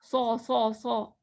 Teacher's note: زبان کی نوک ہمارے دانتوں کے پیچھے ہوگی، نیچے والے دانتوں کے پیچھے، اور پیچھے سے اٹھی ہوگی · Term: سواد